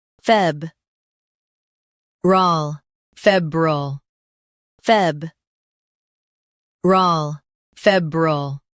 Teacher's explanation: In US, stress f e b and keep rile light. In UK, fee is emphasized.